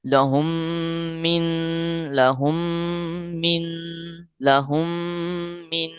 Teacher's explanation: دونوں پر غنہ کرنا ہے اور دونوں کی مقدار کوشش کریں کہ برابر ہی ہو